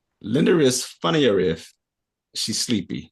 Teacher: I want you to link the word funnier with the word if.